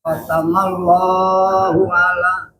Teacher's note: setiap lafaz Allah itu harus 2 harokat